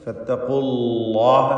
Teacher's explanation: ഫത്തഖുല്ലാഹ എന്ന് ലാമ് പറയുന്ന ലാമ് തന്നെ, ലാമിൽ യാതൊരു വ്യത്യാസമില്ല. പക്ഷേ ഫത്തഖുല്ലാഹ എന്ന് തർക്കീഖിന് പകരം ഫത്തഖുല്ലാഹ എന്ന് തഫ്ഖീമാണ്, തടിപ്പിക്കണം എന്നർത്ഥം.